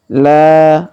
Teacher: huruf la kita panjangkan 2 harokat karena alif di depannya